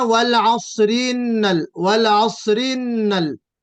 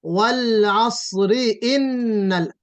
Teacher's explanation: میں نے کہا نا کہ جو حمزہ ہے اس کو پیچھے والی آیت سے ضم نہیں کریں گے، ادغام کی طرح نہیں پڑھیں گے. والعصر ان الانسان جی والعصر إن الإنسان لفي خسر.